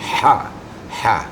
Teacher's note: Huruf ha ini huruf halak. Makhrajnya di tengah-tengah tenggorokan. Jadi dominannya adalah embusan angin terlebih dulu, ha gitu ya.